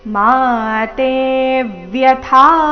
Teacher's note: ಮಾತೆ ಎರಡು ದೀರ್ಘ ತೆ ಮೇಲೆ ಆಘಾತ